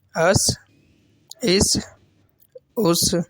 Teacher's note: سین میں آپ جانتے ہیں سیٹی ہوتی ہے